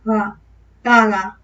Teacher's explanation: Y en la segunda es como si dijésemos gaga. La primera sí tocan, ga, y la segunda no tanto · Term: aproximante